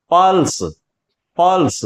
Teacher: मतलब ल के ऊपर बला घात है इसको हम पढ़ेंगे तो लंबा जो स्वर निकलेगा वो प का निकलेगा ल का नहीं · लंबा जो स्वर निकलेगा वो प का निकलेगा, लय का नहीं यहां, और इसे हम पढ़ेंगे पल्स, पल्स।